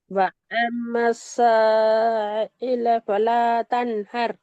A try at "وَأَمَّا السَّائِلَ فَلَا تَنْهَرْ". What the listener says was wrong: நீங்க திருப்பி ஐல லைட்டா தொண்டுக்குள்ள போறீங்க. ரெண்டுமே தொண்டையில முன் பக்கத்துல வச்சு ஓதுங்க. ரெண்டுமே தொண்டையில முன் பக்கத்துல வச்சு ஓதுங்க.